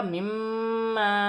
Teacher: میم مشدد میں غنہ کیا جائے گا